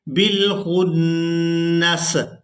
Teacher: اب یہاں پر بھی آپ لوگ علامات وقف دیکھ رہے ہیں، یہاں وقف کریں گے تو وقف کی صورت میں آخری حرف یعنی سین کو ساکن کر دیں گے، نون کو سین ساکن کے ساتھ ملائیں گے، بالخنس۔